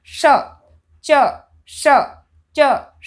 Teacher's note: जैसे हम च बोलने में हमारे जीभ जहाँ पे टच करती है वहाँ पे ही हमें शर्गम वाले श को बोलने में हमारी जीभ मोड़नी है। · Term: तालव्य